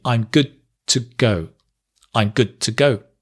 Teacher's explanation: nice expression it sounds quite catchy right I'm good to go notice the D from good drops because we have the T and the tongue is in the same place the DU and the T the Tong's in the same place